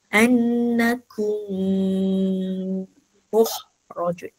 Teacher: Mim mati bertemu mim. Dengung pun dua harakat juga.